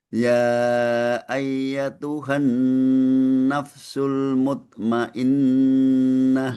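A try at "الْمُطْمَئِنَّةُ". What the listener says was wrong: Muto. Qalqalahnya kurang. Mutmainnah.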